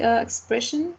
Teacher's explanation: It has 3 syllables, and the stressed is the second one.